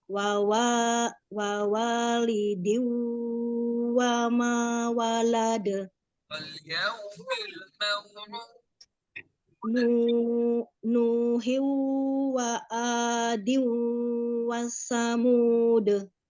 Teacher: idgham bigunah dimasukkan dan dengung ditekan dibaca 2 harokat